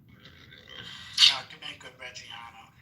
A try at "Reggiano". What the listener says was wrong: Reggiano. You gotta say it like that. You said it too properly, man. Reggiano.